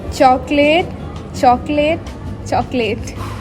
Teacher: she elided the middle vowel, which is typical of connected speech. However, she pronounced the ending as late instead of late, likely influenced by the spelling of late.